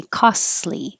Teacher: to say the T it is difficult to say costly because the T and the L are made in the same position so just skip the T and say costly